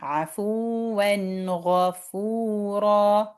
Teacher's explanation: so we will not hide that noon sound at the end of n. We will not stress there for 2 counts.